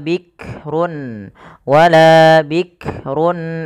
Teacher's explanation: jangan sampai memantulkan huruf Kaf karena Kaf tidak punya sifat qqalah tapi wikrun wikrun palun ada